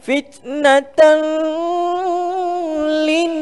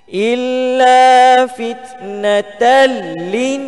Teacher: Okey, idgham bila gunnah, jangan dengung. Okey, kita baca betul idgham, kita memasukkan tanpa kita dengung